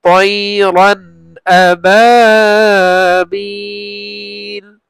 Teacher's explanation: রান তানবিনের পরে হামজা আসছে ইজহার গুন্না হবে না পরিষ্কার করে পড়বো